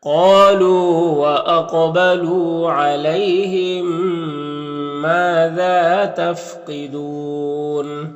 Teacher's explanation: قاف حروف مستعلیہ میں سے ہے اور قاف حروف قلقلہ میں سے بھی ہے، اور قاف کے اوپر جزم ہے تو قاف میں قلقلہ کرنا ہے، یعنی قاف کو ادا کرتے وقت اس کی آواز اپنے مخرج سے ٹکر کھا کر الگ ہو جائے گی، تو قاف کو پر بھی پڑھنا ہے اور قاف میں قلقلہ بھی کرنا ہے۔